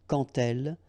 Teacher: when you will have this d, you will phonetically pronounce it like t